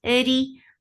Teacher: Ra is light because there is kasra on it. Ja, two counts long.